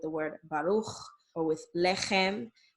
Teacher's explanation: It's the ch sound made in the back of the throat. And it's usually represented by the letters C and H, okay?